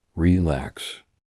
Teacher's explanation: The word relax has stress on the second syllable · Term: word stress